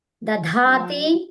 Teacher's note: మధ్యలో ఉన్న ద place లో ఏం చేస్తారు మీరు మహాప్రాణం ద పెడతారు